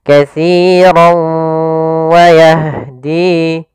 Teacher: Maka katsirau masuk sambil ke rongga hidung kita. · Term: idgham bi gunnah